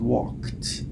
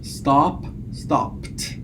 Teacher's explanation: So the allomorphs, or the realizations of the morpheme, the past tense morpheme ed, depend again on the last sound to which it is attached. So it's pronounced as t following voiceless segments. So if you have walk, k is voiceless.